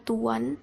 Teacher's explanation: vokal berubah menjadi vokal bundar. Contohnya yaitu pada kata tuan terdengar bunyi w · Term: labialisasi